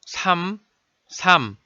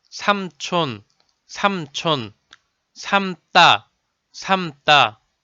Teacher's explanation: The syllable ‘삼’, ‘삶‘ are all sounded as ‘삼’.